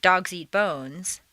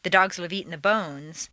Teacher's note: it takes the same amount of time to say both sentences since they have the same number of stresses the three original words and the rhythm stay the same in